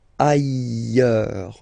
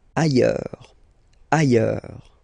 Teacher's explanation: final S not pronounced, and then you've got this y sound